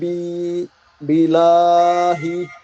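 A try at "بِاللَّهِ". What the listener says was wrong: বিল, তাসদিদ আছে না?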